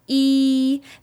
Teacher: This vowel is considered a high front vowel. That means your tongue is high in the mouth and it's towards the front of your mouth. So in this method, I want you to focus on pulling your tongue back while you say this vowel sound.